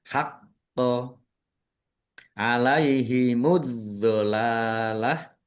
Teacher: Qof-nya ada tasdidnya dibaca dobel. Biar biar tampak dobelnya maka ditekan dan ditahan.